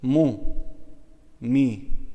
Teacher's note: Mimi është tingull buzor sepse vend nyjetimi i tij janë buzët.